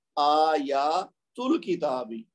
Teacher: अल किताबी का जो हमजा है वो आयातू के साथ जब मिला के पढ़ेंगे तो पढ़ने में नहीं आएगा, ये बन जाएगा आयातुल किताबी। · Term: हमजा वसली